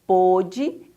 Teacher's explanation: essa palavrinha com acento circunflexo ela é pronunciada um pouquinho mais fechada